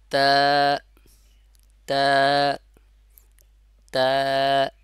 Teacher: জিহ্বার আগা উপরে দুই দাঁতের গোড়ার সঙ্গে লাগবে তাহলে এর পূর্ণ উচ্চারণটা আসবে যেমন তা তা আমি বলেছি আপনার ঠোঁটটা কিছুটা চওড়া হবে দুই